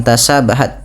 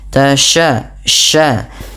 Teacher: Sya, sya, hati-hati jangan tasabahat, tapi tasya, sya. Ya, intisyarus sautufil fam, karena sifat tafasyinya